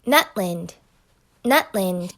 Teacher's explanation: there's a complete break in between those words just like nut land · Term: glottal stop